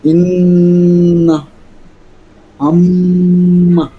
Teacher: 17 নম্বর মাখরাজ, নাকের বাসি হইতে গুন্না উচ্চারিত হয়।